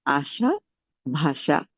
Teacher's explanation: আশা ভাষা একই আমার কাছে শোনাবে, তালব্য ষ এর মতো শোনাবে। মূর্ধন্য ষ এর উচ্চারণটা যেহেতু তালব্য ষ এর মতো হচ্ছে এ কারণে আলাদা করে কিন্তু এটার উচ্চারণটা দেখানো হয়নি।